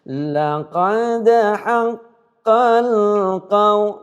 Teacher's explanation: lam jangan dipantulkan, jangan dihidupkan kembali, jangan dikalkalahkan. Yang dikalkalahkan dal ini tadi.